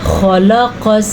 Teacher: خلق السماوات والارض. خلق، خا جو ہے یہ بھاری یعنی کہ موٹا پڑھے جانے والا حروف ہے تو ہم اس کو موٹا کر کے پڑھیں گے